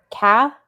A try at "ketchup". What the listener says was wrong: Ket. Ketchup. Catch. Catch. It's not CAT. Like, catch this ball. It's E.